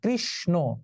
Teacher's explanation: যেমন এই যে আমরা যখন কৃষ্ণ শব্দ লিখবো, পূজা হয়ে গেল কয়েকদিন আগেই, কৃষ্ণ, এখন উচ্চারণ হবে কৃষ, এই মূর্ধন্য স তালব্য স হয়ে যাবে, আর মূর্ধন্য ন দন্ত ন হয়ে এই যে ওকার হয়ে যাবে, কৃষ্ণ। কৃষ ব্যঞ্জনান্ত, ন স্বরান্ত, কৃষ্ণ।